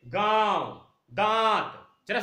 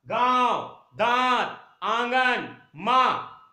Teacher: अनुनासिक में क्या होता है नाक और मुंह से नाक और मुंह से उच्चारण होता